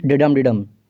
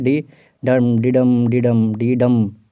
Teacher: unstressed followed by stressed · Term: आयाम्बिक पेंटामीटर